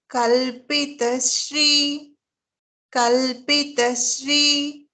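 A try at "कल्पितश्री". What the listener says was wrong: It is not Sri here, it is Shri.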